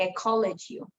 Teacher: the ED in the end will become a syllable with the L